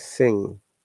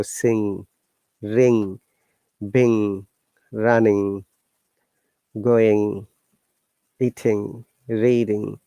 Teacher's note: Though sometimes some linguistics say that G is silent, but basically G is there, but because we pronounce the word through our nose, and we only hear the ng sound